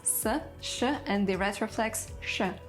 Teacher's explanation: in Sanskrit there are 3 distinct sounds, s, sh, and the retroflex sh. But in Bengali, they all merged into one.